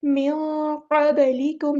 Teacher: क़ब नहीं क़ब, इस तरह आवाज़ हिलानी है बाकी, मिन क़बलिकुम, लाम बारीक पढ़ना है, काफ बारीक पढ़ना है